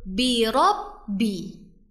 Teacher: huruf ba bertasydid yang bacanya disertai dengan penekanan